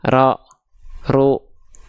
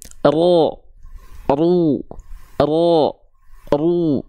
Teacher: Ketika ro berharokat dhammah dan ketika ro berharokat fathah, huruf ro harus dibaca dengan keadaan yang tebal pelafalannya.